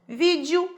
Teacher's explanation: Vídeo é uma palavra paróxima, porque tem a penúltima sílaba mais forte